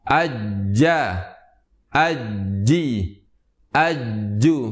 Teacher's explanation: lidah yang paling tengah kita tempelkan ke langit-langit yang tengah pula di bagian atas sehingga lidah yang tengah tersebut menempel ke bagian atas langit-langit kita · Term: huruf Jim